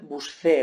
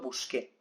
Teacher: lo que yo quiero es conservar el sonido original del verbo en infinitivo, buscar, el sonido oclusivo, K, el sonido K.